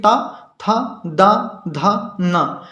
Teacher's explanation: इनका उच्चारण करते समय आपकी जीभ जो है वो दांतों को जरूर टच करेगी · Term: दंती वर्ण